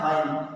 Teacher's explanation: غین جہاں پہ بولتے ہیں اپنے بھاشے میں کوّا لٹک رہا ہے وہاں سے جو ہے نکالا جاتا ہے غین